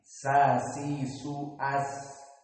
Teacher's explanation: makhrajnya adalah di lisan, yang mana dia tarful lisan dengan apa-apa yang di atas as-sanaya as-sufla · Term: makhraj sin